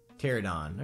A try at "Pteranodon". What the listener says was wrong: Pteranodon. There's another symbol in that that you didn't read, dear. So there's another symbol in that word that you did not read.